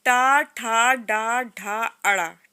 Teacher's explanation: ट ठ ड ढ ण। ठीक है? ये मूर्धा से निकलता है